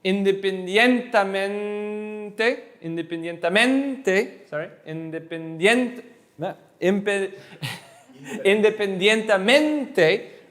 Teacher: the main push is always on the second to last